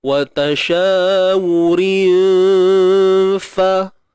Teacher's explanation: Jadi fa ni bukan huruf tebal. Nipis. Maka dengung kita pun nipis. Cuma kita kena dengung tu dan bersedialah untuk menyebut huruf fa. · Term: ikhfa hakiki